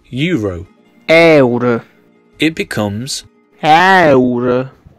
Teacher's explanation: Another difference is the E vowel, E, that sounds more open. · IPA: (æurə)